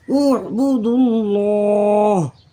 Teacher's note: یہ واو اور یہ الف دونوں خالی ہیں اور یہ اللہ کے لام کا الف بھی خالی ہے اس لیے یہ نہیں پڑھے جائیں گے. ڈائریکٹ دال کو لفظ اللہ کے لام سے ملائیں گے.